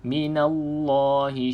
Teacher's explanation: Kemudian pada lafaz Allah minallah kena tebal sebab lafzul jalalah dekat sini sebelumnya huruf berbaris di atas maka